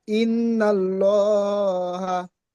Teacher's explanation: পুর মানে ল, মুখ গোল করে পড়তে হবে।